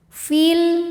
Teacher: Namun dibaca panjangnya hanya saat berhenti saja. Jika diteruskan atau diwasolkan, madnya ini gugur, fi-nya jadi pendek. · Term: takhallus bil hadfi